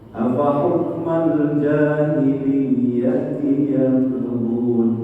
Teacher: Apa hukmal jahiliyah yabghun, ada ba di situ, ba-nya itu adalah huruf qalqalah, harus ada pantulan. Tapi karena adanya di tengah, yang bukan di akhir, maka qalqalahnya sugro, kecil, pantulannya kecil. Kalau mungkin bacanya pelan, hampir tidak terdengar orang lain, gitu.